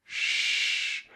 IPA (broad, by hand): ʃ